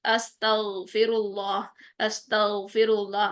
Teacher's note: आपकी ज़ुबान ऊपर की जानिब उठ भी रही है, ग़ैन मोटा भी हो रहा है और कलकला भी नहीं हो रहा